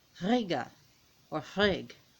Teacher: as you notice the R's are rolled, and in Scandinavian, modern Scandinavian is the closest thing you're going to get to Old Norse, is that all the R's are rolled.